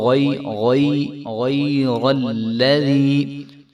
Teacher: غین موٹا حرف ہے اور یا باریک حرف ہے، اور را کے اوپر آگے زبر آ رہی ہے تو را بھی موٹا ہوگا